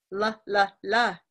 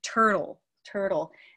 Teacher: so it's an unstressed vocalic or vowel like L sound it pulls way back here right so instead of L which usually taps up here la la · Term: dark L